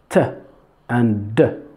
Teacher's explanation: alveolar alveolar sounds alveolar sounds is when you have your tongue the tip of the tongue touches the alveolar ridge behind your teeth